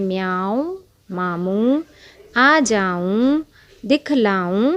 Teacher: نون غنہ ہے، جس کی آواز ناک سے گنگنی نکلتی ہے